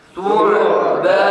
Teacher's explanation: Ayn su'banun su'banun kalkale yapmadan ayn harfini kalkale yapmadan su'banun. Ondan önceki harf dammeli olduğu için bu aynın boğazdan sıkılarak çıkarılması biraz da zordur doğrusu.